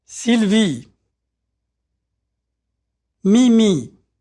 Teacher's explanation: Notice how tight the sound E is. There's no diphthong, which is to say that the vowel sound doesn't change.